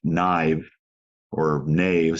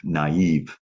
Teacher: separate the A from the I so that you don't have a diphthong. So instead of naive, or knave, some people would say, you actually have naive.